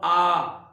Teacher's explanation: जो विवृत है, उच्चारण करने पर मुख का सबसे ज्यादा खुलना, इसमें प्रमुख रूप से एक जो स्वर आएगा वो है आ।